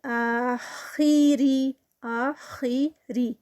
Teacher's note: آ جو ہے وہ 2 کاؤنٹس، خا ہیوی ہوگا لیکن زیر کے ساتھ تھوڑا سا اس کی ہیوینس کم ہوگی